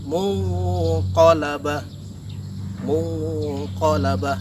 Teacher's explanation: Di situ ada nun mati bertemu dengan huruf qaf, maka nun matinya disamarkan menjadi bentuk NG. Jadi tidak N lagi tapi menjadi NG. Dan jangan lupa setelah disamarkan harus digunakan atau ditahan selama 2 harokat. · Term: ikhfa hakiki